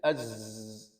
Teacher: Za itu hanya suara saja. Jadi az itu tidak ada aliran angin. Yang ada adalah aliran suara.